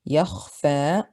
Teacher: Kha is a heavy letter. It has a sukun and it's preceded by a fatha, so it's heavy on the second scale.